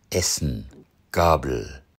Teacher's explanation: Ein Kennzeichen der norddeutschen Aussprache ist der fast komplette Verzicht auf den Schwalaut, diesen abgeschwächten Vokal, den man aus dem englischen, französischen und süddeutschen Sprachgebrauch kennt. Stattdessen wird ein kurzes E als E ausgesprochen. Oder es fällt ganz weg. Dann wird der folgende L oder Nasallaut silbisch.